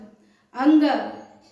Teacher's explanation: इसका उच्चारण स्थान कंठ से, कंठ और नासिका से, दोनों से होता है अंग का उच्चारण